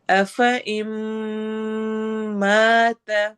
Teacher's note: غنہ ہو رہا ہے، نون ساکن کے بعد میم آ رہا ہے، تو یہ ہمارا ادغام ہے